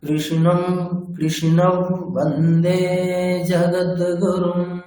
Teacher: অনুসারের জায়গায় অনুনাসিক ব, মানে নাকে নাকে একটা ব। কৃষ্ণম, মানে এটা নাকে নাকে ব বলতে হবে।